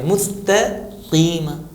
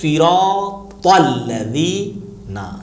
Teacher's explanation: تا کو پتلا ادا کرنا ہے اور طا کو موٹا ادا کرنا ہے۔ ایک چیز اور بھی ہے حرف طا میں، جو زو سے پہلے، زا سے پہلے والا ہے، کہ عربی کا قوی ترین یعنی اسٹرانگ حرف ہے یہ، اس کو ادا کرنے میں تھوڑا سا قوت لگائی جاتی ہے۔